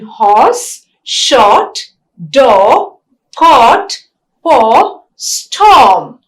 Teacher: O is a back vowel. It is also a long vowel and it is a rounded vowel.